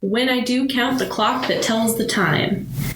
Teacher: it's stressed unstressed syllables and then the pentameter means that there's five sets of those syllables in each line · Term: iambic pentameter